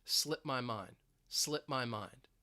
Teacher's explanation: It it's almost like uh you have a silent letter there. So even if I say the phrase, you're not going to hear that e d that t slip my mind.